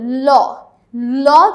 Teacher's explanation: ল যখন আমরা উচ্চারণ করি তখন আমরা জিহ্বাটা এমনভাবে ব্যবহার করি যে জিহ্বার 2 পাশ থেকে বাতাস বের হয়ে আসতে পারে। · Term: পার্শ্বিক ব্যঞ্জন